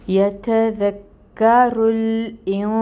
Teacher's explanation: اخفا کی مقدار ہوگی 2 کاؤنٹس، کیونکہ نون ساکن کے بعد سین آ رہا ہے. سین پہ کھڑی مد ہے، 2 کاؤنٹس لمبا پڑیں گے. صفت ہے سفیر، وہ بھی لے کے آئیں گے. اور نون پہ پھر پیش ہے، 1 کاؤنٹ اس کو پڑھیں گے.